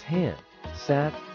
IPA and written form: ˈhaɪndˌsaɪt (hindsight)